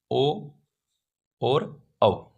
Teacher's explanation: कंठ और ओष्ठ दोनों से जिन स्वरों का उच्चारण होता है उन्हें कंठोष् कहते हैं। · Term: कंठोष्ठ